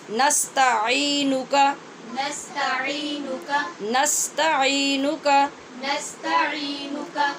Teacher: اس کاف کو نستعینک کہہ کے لمبا نہیں کرنا